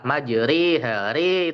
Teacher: Kemudian ro imalah majri hari itu tipis.